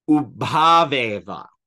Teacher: So here, ow plus a becomes av.